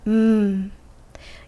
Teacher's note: Press your lips together and say, mmm. Your lips stop the air and force it through your nose.